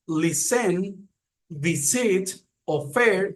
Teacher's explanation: acentuación está en la primera sílaba